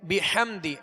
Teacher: ہا کی آواز کو حلق سے، درمیانے حلق سے ادا کریں گے اور واضح کریں گے. بحمدی ہا اس کو بھی درمیانے حلق سے واضح ادا کریں گے.